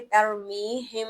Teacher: ہم یہاں پر غنہ کریں گے، ناک سے آواز نکالیں گے کیونکہ میم ساکن کے بعد حرف با آ رہا ہے